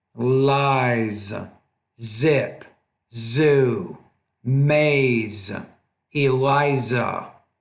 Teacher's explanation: your focus is that Z making sure that you're pronouncing that with a little bit more vibration than what you're doing lies zip zoo maze Eliza multiple Robert